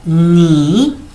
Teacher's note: el tono 3 es como una bajada y una subida